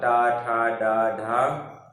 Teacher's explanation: मूर्धा और जीभ की स्पर्श से बोले जाने कारण इन्हें मूर्धन्य वर्ण कहते हैं